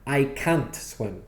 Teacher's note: And the word can't is always stressed.